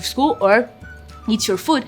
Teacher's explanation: it has a falling intonation at the end of the word go to school or eat your food